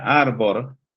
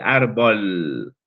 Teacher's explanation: Ese fenómeno llamado lamdacismo hace que la r se transforme en una lateral